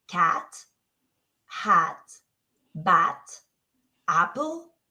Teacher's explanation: mouth which is very important so I like as in cat we need uh to remember that it's short and sharp and we make it with our mouth open your tongue low and your lips relaxed